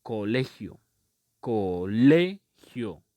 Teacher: La sílaba tónica es le.